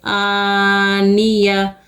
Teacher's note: حمزہ کھڑی زبر آ، نون سینی، آنی، یا زبر یا، آنیہ۔ آ کو کھینچیں گے، آ کے اوپر کھڑا زبر ہے، نون اور یا کو نہیں کھینچیں گے، زیر زبر کو نہیں کھینچتے، آنیہ۔